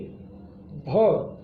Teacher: भ आपका स्पर्श भी है, घोष है, महाप्राण है, ओष्ठ है। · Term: स्पर्श घोष महाप्राण ओष्ठ